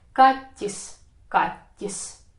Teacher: the middle of your tongue touches the palate, the tip of your tongue is wobbling somewhere where the downer row of your teeth is located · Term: soft T